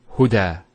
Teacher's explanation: There's the elongation as well, because the fatha followed by an alif. If this wasn't there, it will be huda. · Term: alif maqsura